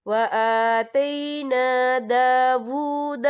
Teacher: یہاں پہ واو الٹا پیش وو پڑھیں گے، بہت سے لوگ اسے او پڑھتے ہیں تو یہ غلط طریقہ ہے